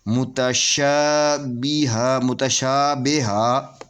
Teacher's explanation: یہ الف سے پہلے زبر ہے، اس کو 2 حرکت کے برابر کھینچ کر پڑھیں گے۔